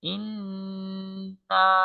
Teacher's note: এই গুন্না উচ্চারণ হয় নাকের পাশ থেকে · নাকের মধ্যে যে একটু গুনগুন করে যে একটু মানে আমরা কিছুক্ষণ ধরে রাখবো শব্দটা